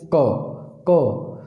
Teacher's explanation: क दे टाइम ते अपनी जीभ कित्थे टच कर रही है, अपने इत्थों उपरली साइड ते कर रही है, मतलब अपने किस नूं टच कर रही है, अपने कंठ नूं टच कर रही है